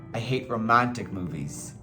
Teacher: So stress the romantic part, because you want to focus on that.